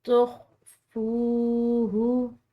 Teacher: یہاں پر واو ساکن ہے، اس کو ہم نے لمبا ادا کیا ہے کیونکہ یہ واو مدہ ہے